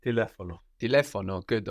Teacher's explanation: we have the accent there on the e, no? Third from the end.